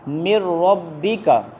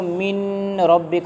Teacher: تو جو را اور لام ہیں، یہ جب آ جائیں گے نون ساکن کے بعد ہوگا یہاں پر بھی ادغام، لیکن یہ بغیر غنہ کے ادغام ہوگا